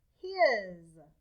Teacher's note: we draw a line through the s a voiced line because the s sounds like a z